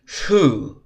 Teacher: hu is like a mixture of the F and the H vocalization